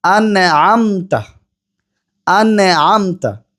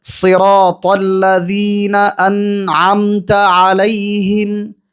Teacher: আমি এখানে নুনে কিন্তু কলকলা করে ফেললাম, অথচ নুন হরফটি কলকলার হরফ নয়, বরং সাকিন অবস্থায় তাওয়াসুতের হরফ হওয়ার কারণে কিছু সময় সেখানে ধরে রেখে সময় দিতে হয়। এরপরে পরবর্তী হরফে যাওয়ার আগে কোনো কলকলা করা যাবে না।